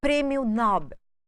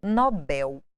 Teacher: Vem do inglês com a tonicidade na primeira sílaba, mas aportuguesado, Nobel.